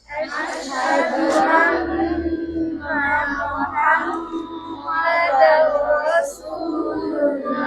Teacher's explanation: এখানে কোথায় নুনের সময় জিহ্বার আগা ছিল দাঁতের ঘোড়ায় আন্না হ্যাঁ মিমের সময় দুই ঠোঁটের শুকনো জায়গা মিল থাকবে আওয়াজ চলে যাবে কোথায় নাকের গোড়ায় এই গুন্না মানে হইলো আওয়াজকে নাসিকা মূলে নিয়ে এক আলিফ পরিমাণ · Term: মিমের গুন্না